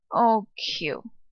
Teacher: really softly in that fifth neutral tone.